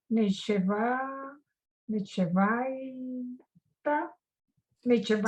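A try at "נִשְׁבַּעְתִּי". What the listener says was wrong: So remember, in the middle of the word, it's a syllable stopper. So it's niche. No, niche. 1 syllable niche. And then the ayin is silent. Bati. Nish bati.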